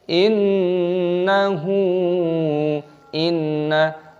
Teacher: gunnah berdengung, nun tasdid dan dipanjangkan haknya